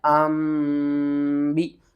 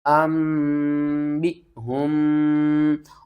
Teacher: نون ساکن اور تنوین کے بعد اگلا حرف اگر با ہوگا تو ہم نون کی آواز کو میم کی آواز میں بدل کر پڑھیں گے